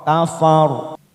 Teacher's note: ada huruf ora yang didahului fathah, kita wakafkan dengan cara menebalkan huruf ora